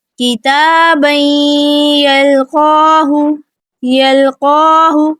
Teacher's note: قاف کو پر اور موٹا پڑھیں گے، کھڑی زبر ہے تو 2 حرکات لمبا کریں گے